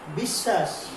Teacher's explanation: শব্দের মাঝখানেও কিন্তু বফলা কি হচ্ছে না, উচ্চারণ হচ্ছে না, তবে যার সঙ্গে যুক্ত হয়েছে সেটি কিন্তু যুক্ত হয়ে যাচ্ছে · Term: দ্বিত্ব